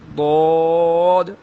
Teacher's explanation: ضاد کو جب ادا کرتے ہیں تو زبان کا کنارہ اوپر داڑھوں کے ساتھ ٹچ ہوتا ہے